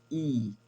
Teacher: जब आप ई का उच्चारण करते हैं तो जीभ थोड़ा सा जाके आपके तलवे से टच होता है, अगर सही से उच्चारित करें तो, ठीक है। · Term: कंठ तालव्य